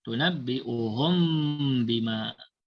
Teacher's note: kita menyembunyikan bunyi mim mati. Kemudian ma'al gunnah, kemudian kita dengungkan dia dua harakat. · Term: ikhfa syafawi